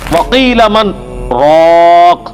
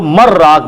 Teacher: یہاں پہ سکتا ہے ایک ہی سانس میں پڑھنا ہے لیکن تھوڑا سا وقفہ کر کے، ورنہ اگر یہ ڈائریکٹ پڑھا جاتا تو مر راق بنتا، کیونکہ نون جو ہے وہ، یہ نون غنہ یا جو تنوین ہے وہ، اس کے بعد اگر 6 حروف میں سے کوئی حرف آ جائے، یا را میم لام واو نون، تو ادغام ہو جاتا ہے.